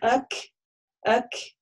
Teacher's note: есть такое, да, как трение, и за счет него мы слышим вот этот хэмс